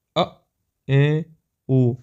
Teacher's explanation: जिन स्वरों के उचार में मुख विवृत की तुलना में थोड़ा कम खुलता है उन्हें अर्ध विवृत स्वर भी कहते हैं